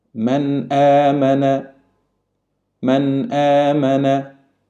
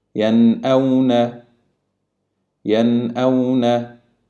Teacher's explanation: In the both positions, we pronounce the Noon exactly the same without any hiding or nasal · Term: Noon Sakina